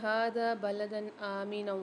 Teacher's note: ہا کے اوپر کھڑا زبر ہے، ہا کو ایک الف میں دار کھینچیں گے